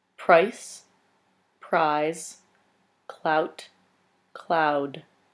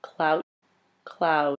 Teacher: the speaker lengthens the diphthong before the voiced consonant, while leaving the diphthong before the voiceless consonant the same length.